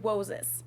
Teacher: try to replace the RS with a W sound because they think it's the closest sound to an English R